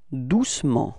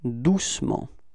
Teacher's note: We don't really pronounce the E between C and M